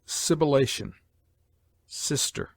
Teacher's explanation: S has a hissing sound